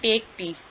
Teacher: टेक पे stress है, टी चाय, ठीक है, स्ट्रेस किस पे आ रहा है, टेक टी पे, इस तरह, ठीक है।